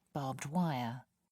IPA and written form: bɑːbd ˈwaɪə (barbed wire)